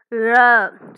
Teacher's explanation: நாவின் நுனி மேல் நோக்கி வளைந்து வருடுவதால் ழ. ஸோ நம்ம நாவின் நுனி மேல் நோக்கி, இந்த பிக்சரை பார்த்தீங்கன்னா தெரியும், இதே மாதிரி நீங்கள் உச்சரிச்சிங்கன்னா இதே உச்சரிப்பு, சரியான உச்சரிப்பு வரும். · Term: சிறப்பு லகரம்